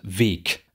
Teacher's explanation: Das liegt jetzt daran, dass hier dieses G am Ende des Wortes landet, am Ende einer Silbe. Dann verliert es den Stimmton. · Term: Auslautverhärtung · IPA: [veːk]